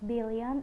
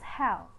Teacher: L is voiced alveolar lateral